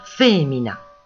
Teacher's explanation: le I est en position pénultième, atone, on ne l'entend pratiquement pas, on dit fémina.